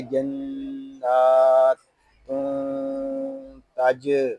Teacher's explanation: ساکن ہے، اس کو سکون کے ساتھ ادا کریں گے، اور یہاں تنوین میں اخفا ہو رہا ہے